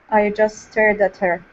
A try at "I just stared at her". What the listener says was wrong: Yeah, so you do not need to pronounce that T. You do not need to pronounce the T with the word just. Especially when there's another word that starts with an S afterwards.